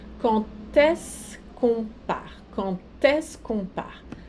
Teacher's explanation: Eu sei que é bizarro, mas o quand, na hora de fazer a liaison, o D se pronuncia como se fosse um T.